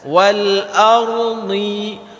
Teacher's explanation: ketika kita baca huruf dhad, tepi lidah kita itu bersentuhan dengan geraham bahagian atas.